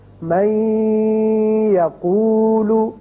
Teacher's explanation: ادغام ہوگا اور نون کی آواز ٹھہرے گی ناک میں